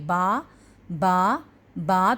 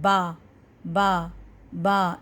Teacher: آپ کے دونوں ہونٹ آپس میں ملتے ہیں، ٹکراتے ہیں، پھر کھل جاتے ہیں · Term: الشفتان